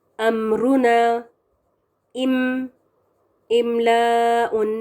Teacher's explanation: It is آرٹیکلیٹڈ by closing the two lips together gently. It is accompanied by غنہ sound from the nasal passage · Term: میم کا غنہ